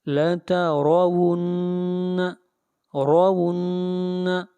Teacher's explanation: را کو یہاں پر موٹا پڑھا جائے گا اور را کے اوپر زبر ہے